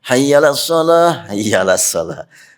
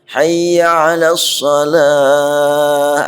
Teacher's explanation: Kadang-kadang suka kelewat ainnya.